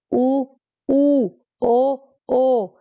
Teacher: जब हम इनका उच्चारण करेंगे तो ऑटोमेटिकली होठ है, मेनली होठ, वो ऑटोमेटिकली गोल हो जाएंगे। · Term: वृत्तमुखी स्वर